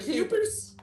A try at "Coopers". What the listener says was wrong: And you're pronouncing it Kyuupers. The Coopers.